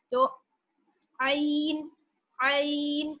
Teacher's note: आइन का मखरज आप याद रखिए, जो हा का मखरज है ना, हलक का बीच वाला हिस्सा, वही जो है वो आइन का मखरज है